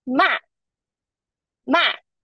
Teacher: Ma is a falling tone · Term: fourth tone